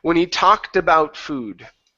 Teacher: Take off that T, add it to the word about. So we're now saying tabout. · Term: ed ending